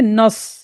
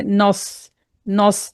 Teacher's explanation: جب ہم صاد کو موٹا پڑھیں گے تو نون کو موٹا نہیں کرنا، کیونکہ نون جو ہے حروف باریک پڑھا جانے والا حرف ہے، تو اس کو بولیں گے نص، نص۔